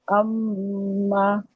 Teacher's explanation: جبکہ جب میم مشدد ہوتا ہے تو اس میں غنہ لازمن ایڈ کیا جاتا ہے، ٹھیک ہے، میم مشدد میں غنہ لازمن ایڈ کیا جاتا ہے، اور وہ ہم انٹینشنلی خود کرتے ہیں، جیسے اما۔